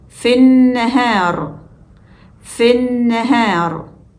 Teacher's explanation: Here we jump straight from F to the first N, skipping both Hamzatul wasl and Lam. Hamzatul wasl is skipped because of the rule that applies when it appears in the middle of a sentence. · we jump straight from F to the first n skipping both H and L